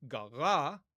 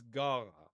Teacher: Okay, people who have lived some time ago in Israel will also say this, but the way it's pronounced today is with a retraction of stress. So in the feminine singular, instead of gara, okay, it's gara.